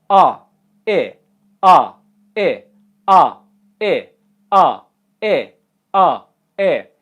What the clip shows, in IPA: a ɪ a ɪ a ɪ